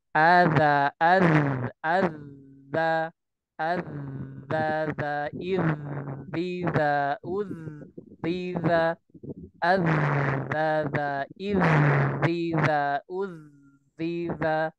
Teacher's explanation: ketika melafalkan huruf zal, ya baik dia sukun maupun ketika bertasydid maka dialirkan